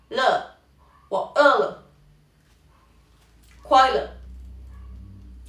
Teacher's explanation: nos encontramos con una e en chino mandarín se puede pronunciar en un punto intermedio entre a y e